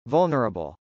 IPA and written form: vˈʌlnɚəbəl (vulnerable)